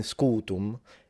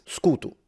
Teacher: So in Sicilian, it's actually almost the same. We lose the phonemic vowel length, but we do pretty much maintain almost everything else except for the M. In Sicilian, it's closer to Latin scutu, Latin scutum.